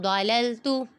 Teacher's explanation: نون پہ اخفا ہو رہا ہے کیونکہ نون ساکن کے بعد حرف اخفا میں سے ضاد آ رہا ہے، ادھر گنہ کریں گے۔